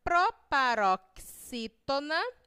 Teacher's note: A antepenúltima sílaba na palavra proparoxítona foi pronunciada com mais força, com mais intensidade.